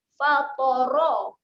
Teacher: Ta ni huruf yang tebal, kita akan bunyi dengan THO.